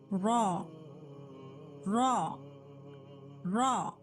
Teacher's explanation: जबान को ऊपर के दांतों के मसोड़ों से टच करिए, देन थोड़ा जुबान फोल्ड होगी सामने की टिप, देन एक हुरूफ रॉ निकलेगा